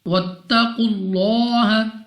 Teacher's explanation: कौफ मुस्तालिया में से है, मोटा पढ़ेंगे, मुंह और आवाज़ को खोलकर